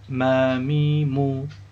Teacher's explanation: Makhraj huruf mim adalah bibir atas dan bibir bawah dirapatkan bersama-sama.